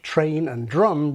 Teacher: Older speakers like me pronounce words like train and drum with initial T and D, but we retract the T and D, pulling the tongue back towards the position of the following R